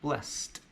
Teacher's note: Notice also that blessed, even though it ends with ed, it actually sounds like a T.